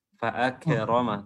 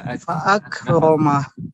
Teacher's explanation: Tadi fa'akramahu itu kafnya kedengaran qalqalah, ya, jangan fa'akramah, tidak, tapi fa'akramah.